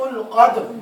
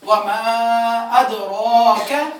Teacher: قاف نقطوں والا وہ پورا آواز کے ساتھ موٹی آواز کے ساتھ پڑھا جائے گا، اور دوسرا کاف باریک آواز سے